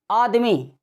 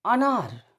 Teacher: तो अर्ध विपरीत स्वर में जैसे बोलते हो अनार, आदमी, तो आ में ज्यादा खुल रहा है, अ में कम खुल रहा है